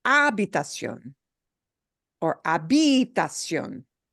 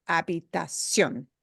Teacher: punch the O in that syllable more than the other syllables · You punch the O at the end just a little harder.